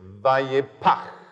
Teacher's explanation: The first part is the P sound, which in phonetics they call a plosive. It's a kind of little miniature explosion. The second main sound is a sound that ordinary English-speaking people can't make.